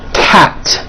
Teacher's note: Cat ends with an unvoiced T.